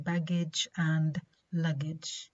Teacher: the back of the tongue makes a firm contact with the soft palate and at the same time the soft palate is raised um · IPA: /g/